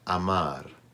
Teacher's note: That last R is more like an English D than an English R.